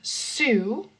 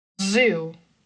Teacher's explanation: So Z, we have S and Z. you're actually using your vocal cords when you are making the Z sound · when you feel that vibration in between your teeth, that is going to be the Z